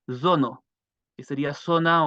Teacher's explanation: la z que es una se pronuncia con una especie de zumbido también